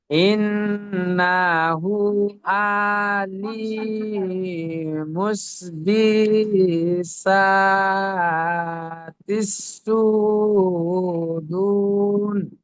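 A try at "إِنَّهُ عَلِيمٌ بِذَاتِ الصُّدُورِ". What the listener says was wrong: ঠিক আছে, কিন্তু আবার এখানে আপনি ভুল পড়লেন, আলী মাস পড়ে দিলেন। আলিমুম বিদাতি সুদূর। ঠিক আছে, এরকম ভালো করে বানান করে করে, চোখ দিয়ে বানান করে করে পড়েন।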